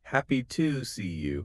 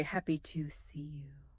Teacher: The schwah is a very lazy, relaxed uh sound. When native speakers say the word to, they rarely pronounce it clearly with an ooh sound. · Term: schwa sound